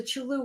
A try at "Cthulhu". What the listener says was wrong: you know, put a little bit more emphasis on the flu.